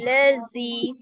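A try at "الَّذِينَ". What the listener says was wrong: देखिए उसमें जा का साउंड आएगा ही नहीं, नरमी से, लज़ी ना।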